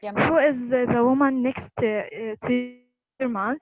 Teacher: So it's a WH question. It's falling intonation.